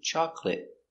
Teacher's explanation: make it a stop T chocolate